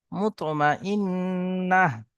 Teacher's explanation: হা জবর না মুতমা ইন্না এখানে এই যে গোল তাটি আছে এই গোল তাটি ওয়াকফ করার সময় সাকিন হয়ে যাবে এবং তার সাথে সাথে হা হয়ে যায়